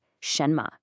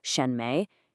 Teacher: all the emphasis is on that first part shenma. The mistake is to give both syllables equal weight like shenme it just sounds unnatural.